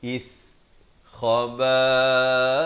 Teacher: Dan diberikan tanda mati mendatang pada huruf sa, di ujung lidah mesti keluar.